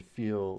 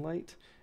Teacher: at the ends of words, we get the dark L, and at the beginning and middle of words, we get the light L